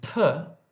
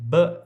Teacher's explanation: one per is aspirated but bur is voiced